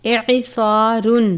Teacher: اعصار، حمزہ اور عین ایک ساتھ ہے، عین کی آواز کو زیادہ واضح کرنا ہے کیونکہ عین کو حلق سے ادا کرتے ہیں، باریک پڑھیں گے اعصار۔